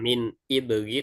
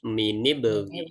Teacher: Min ibri hajjaka wa khaf aqimahu ya, tapi ini karena dia hamzahnya hamzatul wasl ya, hamzah wasl, maka dia kalau disambung dengan huruf sebelumnya atau kalimat sebelumnya, hamzah wasalnya dianggap tidak ada, sehingga bacanya menjadi minib, minib ya, bukan min ibri tapi minibri ya, seperti itu ya, minibri ya.